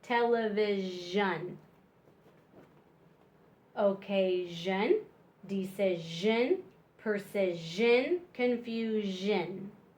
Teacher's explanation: With one S, it's Shun and television. Your teeth vibrate together and make a Z sound